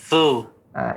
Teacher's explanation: Lidahnya yang saya dengar mengena gigi seri atas. Jadi nggak sempurna ya ketajaman suaranya tadi.